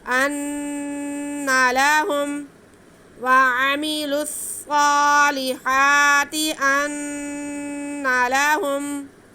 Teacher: نہ نون کو کھینچنا ہے نہ اس لفظ کو کھینچنا ہے، بس نون پہ گنا کرنا ہے ہم نے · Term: نون مشدد